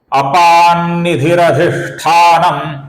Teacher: निधि का जो विसर्ग है इसके आगे जो अधिष्ठान का अ आया हुआ है उस कारण से विसर्ग का यहां पर र बन के, अपूर्ण र बन के अ में मिल गया है, तो यहां पर र हुआ है।